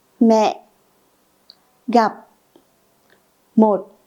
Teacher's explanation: this is a low tone. The pronunciation is heavy and goes down quickly, like the illustration here, and let's practice through some example. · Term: thanh nặng